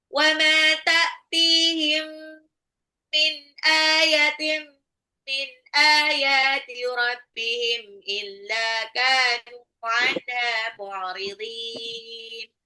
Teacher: ta'tihim mim sukun ketemu mim adalah idgham mimi digabung